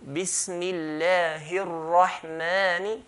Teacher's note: So here, if we're not going to stop, then this is called mad tabi'i, the natural mad, which is 2 counts. Okay, ar-Rahman, we're going to stretch the mim 2 counts